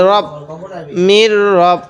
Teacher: মিল রটা একটু মোটা করে পড়বো